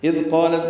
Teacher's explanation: اذ قالت میں ذال نرمی سے ادا ہوگا، قالت قاف پر ہے، الف مدہ ہے، تا ساکن پہ ہمس ہے